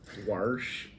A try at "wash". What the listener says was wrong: There's no R or O. You're saying like WHORSH.